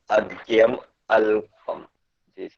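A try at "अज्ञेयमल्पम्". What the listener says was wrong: Yes, good.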